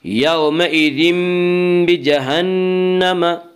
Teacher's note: اس کا قاعدہ ہے کہ نون ساکن اور تنوین کے بعد اگر بائے تو وہاں پہ قلب ہوگا، یعنی نون ساکن اور تنوین کو میم سے بدل کر غنہ کے ساتھ پڑھیں گے۔ یہاں تنوین کے بعد بار ہے، اس لیے یہاں پہ قلب ہوگا۔